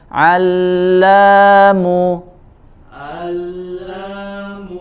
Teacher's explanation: Huruf ain di wasatul halq.